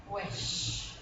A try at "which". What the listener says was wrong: No, la I la tiene, la está haciendo perfecto, pero la CH. Which. Which. Yeah, es una CH.